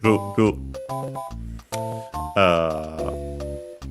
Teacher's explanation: L can be one of the pronunciations of Japanese R, and almost more often than not it's a tap flap R.